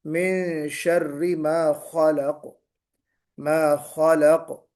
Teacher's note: منہ بھر کے نکالیں گے، اس کو خا کو موٹا پڑھیں گے